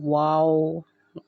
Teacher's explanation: تو آپ نے دونوں ہونٹوں کو گول کرنا ہے اور پھر یہ والا حرف پڑھنا ہے